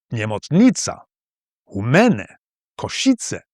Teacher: in the east, where I've spent most of my time, there's often additional stress on the penultimate syllable